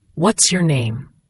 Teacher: What's your often blends together sounding like What's your? The S links to the Y. The name has that long A sound like in day.